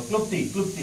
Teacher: क्लुप्ती असा आपण जो उच्चार करतो त्यातला ल जो असतो तो सायलेंट असतो